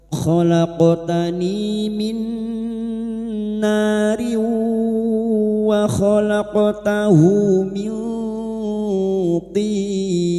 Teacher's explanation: Khalaqtani qaf sukun yang mati asli di tengah kalimat qalqalah sugra. Jangan lupa dipantulkan.